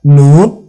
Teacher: 3 दांतों को के मसूड़ों को आपने जुबान लगानी है, उससे नून अदा होता है